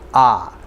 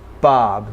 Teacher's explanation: So here we have short O and it sounds like ah.